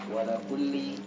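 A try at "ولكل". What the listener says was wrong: Wali kulli li. Itu huruf jar li. Wali kulli li. Itu huruf jar.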